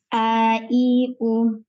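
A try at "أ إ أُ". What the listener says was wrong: Tak panjang, tak panjang. I, U. Suara pendek ya. Ya, yang dibaca, kita baca Hamzah dengan 3 harakat, 3 keadaan, fathah, kasrah, dhammah. A, I, U.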